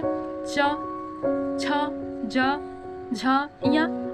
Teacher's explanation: जिन व्यंजनों के उच्चारण में जिह्वा का अग्रभाग तालु को स्पर्श करता है, तालव्य व्यंजन कहलाते हैं। जैसे च, छ, ज, झ, या और बड़ा सा य, ये क्या है, तालव्य व्यंजन।